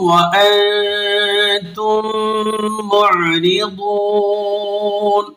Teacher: اب آپ نے یہاں کیا کرنا ہے، میم کو آپ نے میم کے اندر ملانا ہے، جسے ادغام کہتے ہیں۔ یہاں ادغام شفوی بھی ہے، ادغام مثلین بھی ہے، کیونکہ یہاں پہلی میم ساکن ہے اور دوسری متحرک ہے